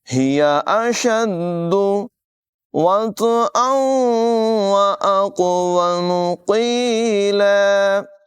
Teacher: تنوین کے بعد واو حروف ارمالون میں سے ہے، ادغام کریں گے، غنہ کر کے پڑھیں گے۔ قاف دونوں جگہوں میں پر ادا کیا جائے گا، یہاں قاف میں قلقلہ بھی کریں گے، خوب ظاہر کر کے پڑھیں گے